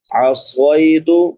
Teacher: قل انی اخاف ان عصیت، نون ساکن پہ اظہار ہوگا کیونکہ بعد میں حروف حلقی میں سے عین ہے۔ عصیت، صاد کے بعد یا لین ہے، یا ساکن ما قبل فتحہ یعنی زبر ہے، اس کو نرمی سے پڑھیں گے